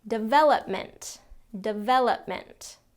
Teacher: It's not development or development. It's development, second syllable stress.